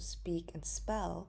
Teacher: when it is not in the beginning of the word such as the examples of speak and spell we do not see the aspirated p